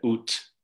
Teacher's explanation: So for example, in the number for 8, okto in Indo-European, you get ut with an aspirated T in classical Armenian